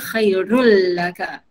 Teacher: Khairun tapi jumpa dengan lam. Dia jadi khairul laka. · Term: Idgham bila gunnah